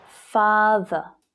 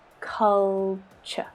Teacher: can you hear the schwa sound in the unstressed syllable